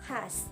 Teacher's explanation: Yang ke-14 bunyi X. Ciri-cirinya mati, oral, frikatif.